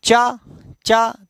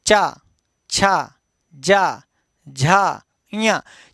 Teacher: चा जब बोलते हैं तो जीभ जिस स्थान को छूती है वह स्थान तालु कहा जाता है